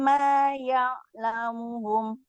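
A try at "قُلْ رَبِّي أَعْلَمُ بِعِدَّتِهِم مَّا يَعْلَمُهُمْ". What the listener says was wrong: Nah, ini ketahuan masalahnya di ain sukun. Sama di sini Rabbi a'lamu. Ini di sini huruf ain sakunnya kurang tawasud. Ya'lamuhum 2 kali ain sukun. Dua-duanya wajib geser bunyinya apa? Bukan geser, agak panjang. A'lamu tapi depannya a, jangan ain. A'lamu bi'iddatihim ma ya.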